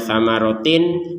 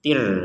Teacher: Huruf taknya di sini berharokat kasrotain bertemu dengan huruf ro, maka yang awalnya samarotin kita bacanya samarotir. Tir seperti itu.